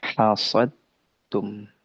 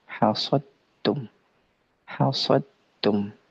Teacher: sempurna masuknya dal sempurna masuknya ke huruf ta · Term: idgham